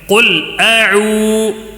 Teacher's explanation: یہاں پہ واو مدہ ہے، ایک الف کھینچ کر پڑھنا ہے